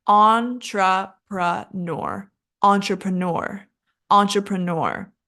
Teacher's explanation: and our stress is the first syllable